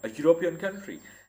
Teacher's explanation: Now we have used European over here with an A because it is not a vowel sound. Like if you look at it closely, you will see that it begins with a consonant j sound.